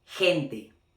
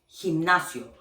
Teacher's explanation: when G is next to E or I, it's gonna have the phonetically sound of, like in English, H. Okay, or like la J in Spanish as well.